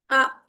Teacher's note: हमजा के ऊपर जज्म हो तो थोड़ा सा हमने झटका देना है